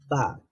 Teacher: আচ্ছা, এই বাটা আর্টিকুলেট হয় কিভাবে? যখন আমরা দুইটা ঠোঁটকে বন্ধ রেখে তারপরে একসাথে দুইটা ঠোঁটকে খুলে ফেলি, তখনই উচ্চারিত হয় বা। অথবা আমরা বলতে পারি দুই ঠোঁট দ্বারা উচ্চারিত হয় বা।